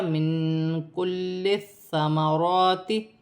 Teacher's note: را پر کھڑی زبر ہے، ایک الف کی مقدار کھینچ کر پڑھا جائے گا